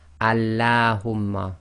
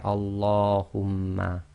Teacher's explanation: Allahumma is one of the other cases apart from the name of Allah where the lam is not pronounced normally as taraqiq. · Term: tafkhim